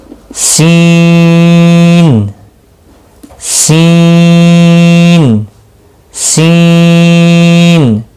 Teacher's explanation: اب سین کو 3 سے 5 الف کے برابر کھینچ کر پڑھنا ہے، سین سین سین، سیٹی کی آواز نکلنی چاہیے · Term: حروف صفیریہ